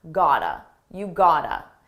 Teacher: This is a reduction. It's a combination of the words got to, and it's pronounced as one.